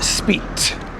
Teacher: I have this real sort of aspirated thing going on at the end.